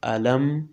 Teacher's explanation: ألم نجعل الأرض مهادا. ألم میم ساکن کې غنه نه کیږي ځکه د میم ساکن نه وروسته نه باشته او نه میم.